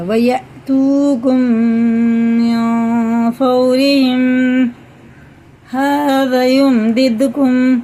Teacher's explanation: دیکھو میم ساکن بعد میم آ رہا ہے تو غنہ کے ساتھ پڑھیں گے